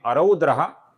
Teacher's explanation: इसके विसर्ग का आगे क आने के पश्चात हम अपूर्ण ख ऐसा उच्चारण करते हैं